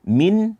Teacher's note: Min, jangan dibaca min, tidak. Dibaca min, yaitu dengan menjelaskan bunyi daripada huruf nun tersebut. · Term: izhar